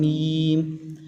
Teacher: جب ہم میم پڑھتے ہیں تو ہمارے دونوں ہونٹ آپس میں ملتے ہیں میم، تو میم بھی ہونٹوں سے ادا ہوا.